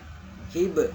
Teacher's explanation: Salah satu huruf qalqalah itu huruf ba. Hib ketika dia mati memantul.